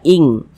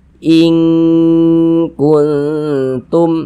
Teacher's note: dia lebih condong berbunyi eng, lebih condong berbunyi ng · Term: ikhfa hakiki ab'ad